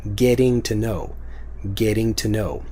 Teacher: It's still kind of a T sound, but if you have the getting, it becomes more of a D.